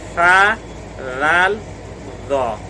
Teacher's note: कहाँ से निकलते हैं ये तीनों? ज़ुबान की नोक और सनाया उलिया का किनारा।